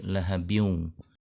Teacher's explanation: bunyi n di kata lahabin dileburkan ke wau di depan menjadi lahabiung dengan menggunakan idghom nya tidak tergesa-gesa tidak tergesa seperti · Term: idgham